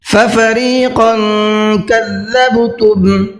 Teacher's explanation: قاف کے اوپر تنوین ہے، قاف کو منہ بھر کے بھی پڑھنا ہے اور ساتھ ساتھ اخفا بھی کرنا ہے، اس لیے کہ تنوین کے بعد میں کاف آ رہا ہے.